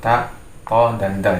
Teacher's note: terletak di lisan, tepatnya pada ujung lidah bertemu dengan pangkal gigi bagian atas